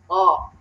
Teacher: Terus to, kalau to pakai yang atas ya, di belakang di seri atas. To itu kayak ta tapi lebih tekan lagi supaya bisa dapat tebalnya